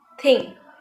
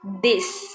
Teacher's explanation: suara yang dihasilkan yaitu dengan memasukkan ujung lidah di antara gigi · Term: interdental